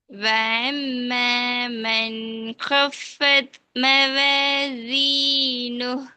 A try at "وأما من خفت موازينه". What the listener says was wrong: இப்ப நீங்க ஐன் தான் உச்சரிக்கிறீங்க அலிஃப் வரல. லாஸ்ட் அலிஃப் உச்சரிங்க பாவம். அலிஃப் உச்சரிக்கணும் எந்த இடத்துல சொல்லுங்க சரியா? நாக்கு எந்த இடத்துல தொண்டையில ஸ்டார்ட் ஆகுது முன்பகுதி நல்ல முன்பகுதி வருது அந்த பகுதி தான். நாவிட தொண்டையில எந்த ஒரு பகுதி மசையப்படாது. என்று சொல்ல நேரம் என்ன நடக்குது? நாக்கிட பின்பகுதி தூக்கப்படும்.